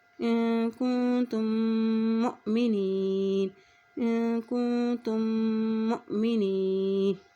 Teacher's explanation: حمزہ کے اوپر جزم ہے تو یہاں پہ جھٹکا دے کے ادا کریں گے